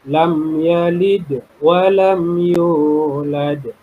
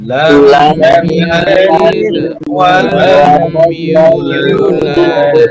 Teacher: menekan sedikit makhraj huruf dari harokat huruf qalqalah yang berharokat sukun tersebut, sehingga lafalnya memantul dengan pelan